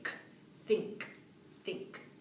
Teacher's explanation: And you can hear that K being released. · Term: consonant cluster